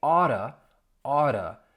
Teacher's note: You don't hear a T sound, you hear more of a soft D.